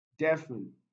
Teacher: this one is stressed on the first syllable